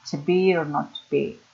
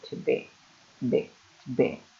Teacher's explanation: Acentuamos el verbo, no la preposición.